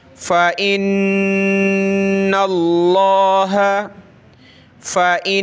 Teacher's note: व मीकाल व जिब्रील व मीकाल फ़इन्नल्लाह, नून पे देखें तशदीद गुन्ना होगा और लफ्ज़ अल्लाह से पहले ज़बर है, नून पे ज़बर है लफ्ज़ अल्लाह से पहले, तो लफ्ज़ अल्लाह को हमने बड़ा करके मोटा करके पढ़ना है।